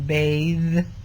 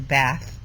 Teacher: th has both a voiced form as in um bathe and a voiceless form as in bath · TH has both voiced form, as in bathe, and a voiceless form, as in bath. So depending on whether it's voiced or voiceless, they'll either use the voiceless T or the voiced D, because those two sounds are set in the same place, but one is voiced and one is voiceless.